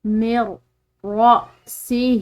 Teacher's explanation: پڑھا جاتا ہے۔ دیکھیں اس کو دوبارہ، من رأسہ، یہاں پر کھڑی زیر ہے، تو یہ عام زیر کے مقابلے میں ایک الف کی مقدار اس کو لمبا ادا کیا جائے گا۔